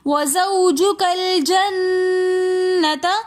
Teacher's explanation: وَزَوْجُكَ الْجَنَّةَ میں نون مشدد ہونے کی وجہ سے ہم اس نون پر غنہ کریں گے